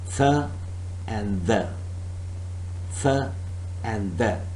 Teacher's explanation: The tip of the tongue is touching the back of the front teeth, and then it is producing th or the. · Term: dental sound